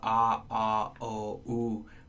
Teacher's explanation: by the time you get to who your lips are about as rounded as they can be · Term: back vowels